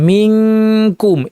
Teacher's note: নুন সাকিন কাফ মিনকুম কফের মতো একই রকম, কিন্তু এখানে কাফটা কিন্তু পাতলা হরফ, কাফের মাখরাজ জিব্বা লাগিয়ে দিবেন, নাক থেকে গুন্না করবেন। মিনকুম এটা হচ্ছে আমাদের বাংলা অনুস্বার। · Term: কাফের ইখফার আওয়াজ